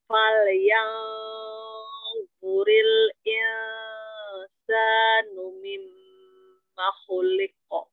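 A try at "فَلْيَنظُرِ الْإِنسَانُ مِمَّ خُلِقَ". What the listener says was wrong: Coba ditipiskan lagi huruf nun sukun ketemu sinnya. Insa. Insa dari depan.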